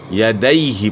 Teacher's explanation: اپ نے یدی یدی نہیں پڑھنا یہاں بھی یائی لین ہے یا ساکن سے پہلے زبر ہے تو یائی لین کو مجہول نہیں پڑھنا معروف پڑھنا ہے